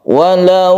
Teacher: lam jalalah yang sebelumnya ada dhomah kita sebut dengan bacaan tafkhim atau tebal lam jalalah yang tafkhim itu disebabkan karena sebelumnya ada dhomah atau